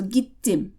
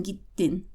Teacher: please keep in mind that you have to pronounce both consonants in Turkish so this kind of sounds like you're stopping over the consonant and that's because you're taking the time to pronounce both of